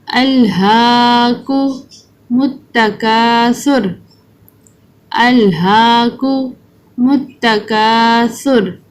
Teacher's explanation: ہا جو ہے وہ 2 انکوں والی ہا ہے، اس کو وسطی حلق سے نکالنا ہے، یعنی درمیان والے حلق سے ہا اس طرح کی آواز نکلے اور اس کے اوپر کھڑی زبر ہے اور ہم اس کو لمبا کر کے پڑھیں گے۔ اور کاف یہاں پر ڈنڈے والا ہے، اس کو باریک پڑھیں گے یعنی منہ کھول کر، اور سا ہے اس کو بہت نرمی سے زبان کو دونوں اگلے والے اوپر نیچے دانتوں کے نیچے دے کر زبان کو نرمی سے پڑھیں گے۔ · را کو اوپر پڑھیں گے، کیونکہ جب را کے اوپر زبر اور پیش ہوتا ہے تو ہم اس کو پر پڑھتے ہیں